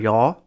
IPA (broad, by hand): jɔ